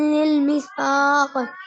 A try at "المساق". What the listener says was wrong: मसाक पढ़ो, मिसवाक पढ़ना बा। मसाक मीम पे जबर।